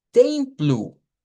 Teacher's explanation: Y estuvimos viendo que, por ejemplo, templo se escribe igual, pero sacábamos la versión de acuerdo al alfabeto fonético, donde decimos templo, en donde veíamos la nasalización de la E con la M y que la O al final de las palabras en portugués se pronuncia como una U